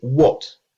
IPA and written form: wɒt (what)